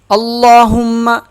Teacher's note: لام پہ تشدید ہے، کھڑا زبر بھی ہے، سخت بھی ہوگا، اور ایک الف کے برابر کھینچا بھی جائے گا · میم پہ تشدید ہے، اسے سخت پڑھیں گے اور غنہ کریں گے